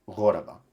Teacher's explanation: He retains the standard Arabic pronunciation of this word, where not only is the hamza here, but that changes the stress to the final syllable.